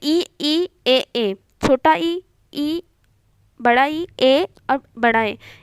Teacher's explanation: छोटा ई बड़ा ई ए और बड़ा ए, इसे उच्चारण करते हैं तो ये आगे से उच्चारण होता है, मतलब अग्रभाग से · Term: अग्र स्वर